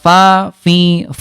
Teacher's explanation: Huruf fa bunda sifat hurufnya hams ada udara ya.